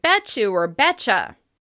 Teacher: the /t/ sound changes into the /ch/ sound to flow more easily into the /j/ sound at the beginning of the word you. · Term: yod coalescence